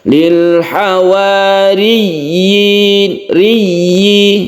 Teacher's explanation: kita harus membacanya dengan jelas ynya tersebut dan di panjangkan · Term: Mad tamkin